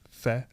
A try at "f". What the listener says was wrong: No, that's F-A. Fa. It's just F. You're saying the whole word. It's just. Just say F.